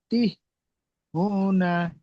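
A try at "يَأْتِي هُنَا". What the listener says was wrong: ইয়াতি, টান হবে তো, ইয়ামাদ্দা ইয়াতি হুনা।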